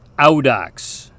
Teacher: the diphthong AU is pronounced ow, like the English interjection we make when we hurt ourselves.